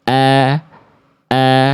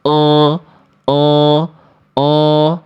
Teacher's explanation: huruf berharakat fathah yang vokalnya a murni itu tipis. A a ya. Kalau huruf tebal itu vokalnya A tapi gemuk. A menjadi O o o.